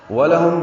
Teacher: ولہم میں آگے واو لام ہونٹوں کی نا تمام گلائی سے واو ادا کرتے ہیں، لام کو جلدی سے پڑھنا ہے، ساکن پہ اظہار.